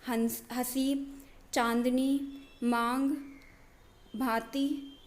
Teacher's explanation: उच्चारण करते समय क्या होता है, हवा नाक और मुख से समान दबाव के साथ बाहर निकलती है। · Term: अनुनासिक